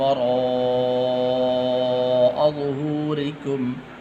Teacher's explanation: بڑی مد ہے، اس مد کو 5 الف کے برابر لمبا کیا جاتا ہے